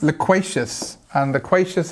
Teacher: loquacious has the stress on the second syllable